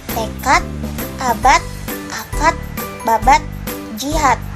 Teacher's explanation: Fonem berbahasa Indonesia yang menggunakan akhiran huruf D dalam posisi akhir kata itu diucapkan huruf T. Oleh penutur bahasa daerah seperti penutur bahasa Sunda cenderung akan diucapkan dengan menggunakan akhiran huruf D.